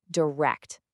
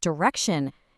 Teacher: The T sound softens right into that sh sound.